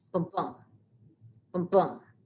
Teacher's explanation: The second syllable is louder. It sounds like a heartbeat. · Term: iamb